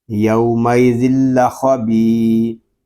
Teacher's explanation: با کو ہم ایک الف تک کھینچ کر پڑھیں گے کیونکہ یہاں پہ یا مدہ ہو رہا ہے